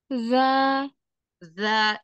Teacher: ujung lidah bertemu dengan gigi seri atas Za jadi jadi dikeluarkan lidahnya sedikit menempel ke ujung ke ujung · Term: huruf dza